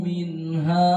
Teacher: tampak bahwa nun mati jelas bunyinya, tanwin jelas bunyinya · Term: izhar hamki